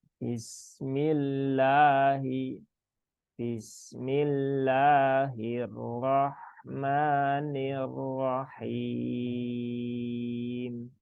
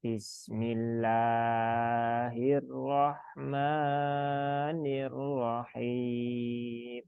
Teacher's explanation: ditandai dengan adanya fathah berdiri sehingga cukup dibaca satu Alif ya satu Alif atau dua ketukan atau satu kali ayunan Bismillahi Bismillahirrohmanirrohim Jadi cukup segitu aja cukup Bismillahi ya tidak bismillahirrohmanirohim